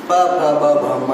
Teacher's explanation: और होठ से है प वर्ग, प वर्ग, प फ ब भ म, ये ओष्ठ से उसकी ध्वनि आती है।